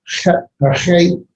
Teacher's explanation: The 2 that really do make the hard or the back of the throat sound are the hey and the het. Even with the hey, you should use the back.